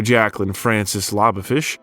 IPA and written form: ʤæklɪn ˈfrænsɪs ˈlɑboʊfɪʃ (Jacqueline Frances Labofish)